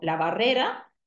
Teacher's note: ahí vamos a tener una aproximante muy abierta en posición intervocálica. Podemos también tener realizaciones un poco más cerradas y incluso podemos tener elisiones totales.